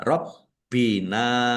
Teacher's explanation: bnya dibaca dobel ada tasdidnya ditekan dan ditahan biar tampak dobelnya.